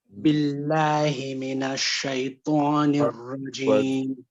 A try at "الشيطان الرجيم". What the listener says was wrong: Good, and it's shaytan. Avoid moving your lips too much. Don't say shaytwa. Say shaytan. Shaytanir rajim. So shayta is too much movement of lips. You've added a wow. Shaytwa, wa is the makhraj of a wow.